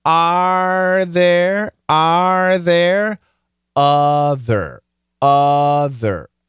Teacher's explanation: that tongue comes up to make the r sound doesn't touch anything